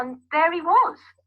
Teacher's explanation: So the H in he is dropped out.